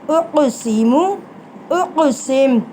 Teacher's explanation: آواز پلٹ کے واپس آ رہی ہے تو ہمیں پتہ چل رہا ہے کہ ہم یہاں پر قلقلہ کر رہے ہیں